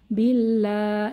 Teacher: এখানে আল্লাহর লাম পাতলা হবে আগের হরফ বাতে জের আছে